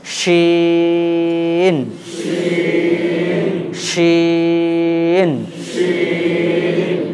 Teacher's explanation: চলেন তাহলে দেখেন, এই অক্ষরটা উচ্চারণ করতে গেলে জিভের মধ্যখান ওপরে তালুর সঙ্গে লাগাতে হবে, উচ্চারণটাকে লম্বা করতে হবে। হ্যাঁ, জিভের মধ্যখান ওপরে তালুর সঙ্গে লাগিয়ে উচ্চারণটাকে লম্বা করতে হবে এবং আওয়াজটাকে মোটা রাখতে হবে।